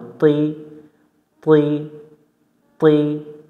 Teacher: ত অক্ষর জিহব্বার আগা থেকে মোটা করে পড়তে হয়